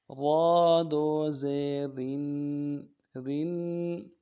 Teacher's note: را کو باریک کرنا ہے، تنوین ہے غنہ کرنا ہے